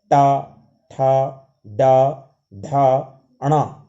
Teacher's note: आप अपनी जीभ को देखेंगे तो वो उसी ओर मुड़ेगी जिस तरह से उसका स्थान निश्चित किया गया, मूर्धा ऊपर की ओर आपकी जीभ जा रही होगी। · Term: मूर्धन्य वर्ण